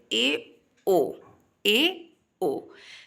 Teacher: अर्ध संवृद्ध जिसमें half close मुख द्वार लगभग आधा बंदी होता है